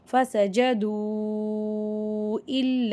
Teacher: இந்த இடத்துல மத்தே முன்ஃபசில் வருது. 2லிருந்து 5 அலிஃப் வரைக்கும் நம்ம நல்லா நீட்டி ஓதணும்.